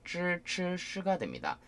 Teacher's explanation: 쯔, 쯔, 쓰는 앞니를 치면서 시작을 하지만, 쯔, 쯔, 쓰는 혀가 윗천장에 말려있는 상태에서 이렇게 내려오면서 발음 내는 거죠. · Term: 권설음